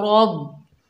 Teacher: रॉ के ऊपर ज़बर, आगे बा मुशद्दद है, रॉ को बा से मिलाएंगे, रॉ को मोटा पढ़ेंगे